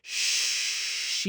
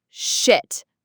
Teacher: it has that long E sound. You really want to hold that sound. Sheet. Yeah, think of it like you're stretching it out, almost like saying she and then T.